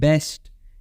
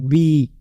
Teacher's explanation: दोनों lips touch है एक दूसरे से और जो साउंड बाहर आ रहा है वहां पे आप देखोगे कि ऑब्स्ट्रक्शन हो रहा है हवा का फ्लो सही से नहीं हो पा रहा है राइट